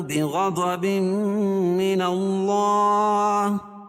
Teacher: ضاد اور غین دونوں حروف مستعلیہ میں سے دونوں کو پر پڑھیں گے، اور تنوین کے بعد ادغام مع الغنہ کے 4 حرفوں میں سے میم آ رہی ہے تو یہاں غنہ کر کے پڑھیں گے